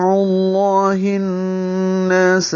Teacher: دفع اللہ، فا پہ ہمس ہے اور عین وسط حلق سے، لام اسم جلالہ کو پر پڑھیں گے، اللہ کیونکہ پیچھے عین پر پیش ہے، ہا کے نیچے زیر ہے، اقصى حلق سے نکالتے ہوئے معروف طریقے سے پڑھیں گے، اور ہن نون کے اوپر تشدید ہے، نون مشدد ہے، اس لیے اس کو ملائیں گے اور ادغام شمسی کریں گے اور غنہ کریں گے، ادغام شمسی مع الغنہ۔